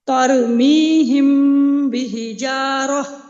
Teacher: یہاں پہ میم ساکن یہاں پہ اخفاء شفوی ہو رہا ہے اور یہاں پہ ایک الف کے برابر ہم غنہ کریں گے